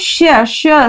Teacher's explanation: त्यानंतर हे जे श श स याचं प्रत्येकाचा उच्चार वेगवेगळा आहे बरं का. श श असं म्हटलं की वरचे दात आहेत त्याच्या वर जो टाळ्याचा भाग येतो त्याला टेकतो.